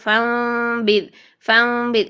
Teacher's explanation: نون کی آواز کو میم میں چینج کر کے پڑھتے ہیں اور 2 سیکنڈ یہاں پر آواز کو ٹھہرا کے رکھتے ہیں، جیسے فانبذ فانبذ، اس کی مقدار 2 حرکات ہے، ٹھیک ہے۔ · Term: اقلاب